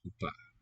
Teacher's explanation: O seems to raise to an U.